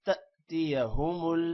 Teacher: تأتیہ حمزہ آ رہا ہے، اس وجہ سے جھٹکے کے ساتھ پڑھنا ہے